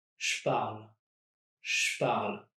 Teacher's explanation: You might have noticed that francophones also contract the je, and it sounds like a sh. So it's as if I was dropping that on je as well.